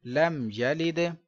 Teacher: یا زبر یا لم یا لام دال زیر لید لم یلد میم ساکن کے بعد با میم نہیں ہے لہذا اظہار شفوی غنہ نہیں کریں گے